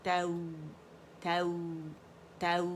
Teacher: فتحہ کے لیے 1 کاؤنٹ کے لیے جبڑا ہمارا کھلے گا، آواز 1 کاؤنٹ کے لیے اوپر جائے گی اور نرمی کے ساتھ اسے واو کے ساتھ ہم ملائیں گے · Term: لین